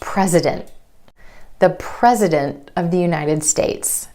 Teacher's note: that T is held after the N in the NT cluster. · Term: held T